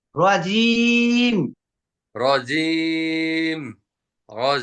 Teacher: জিমটা কি হচ্ছে তালুর মধ্যে লাগতেছে